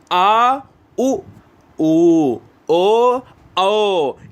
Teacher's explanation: जो गले से आवाज आएगी वो पश्च स्वर कहलाएगा। क्यों? क्योंकि जीभ के पीछे का हिस्सा सक्रिय रहता है ना।